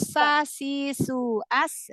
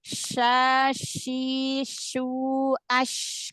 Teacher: jadi kalau sa biasa tipis, huruf shin juga tipis, cuman dia lebih ada sifat tafasi ya